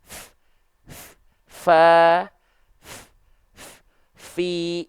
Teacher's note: Ujung gigi sari atas kita sentuh ke bibir bawah bagian dalam. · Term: hams